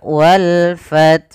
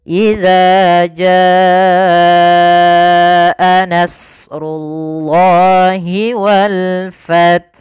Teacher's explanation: alif dan lam yang kita tulis dan kita baca dengan jelas suara lamnya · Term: alif lam qamariyah